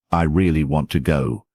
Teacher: in the sentence I really want to go, the words really and go are stressed. Stress helps listeners identify the most important information in your speech.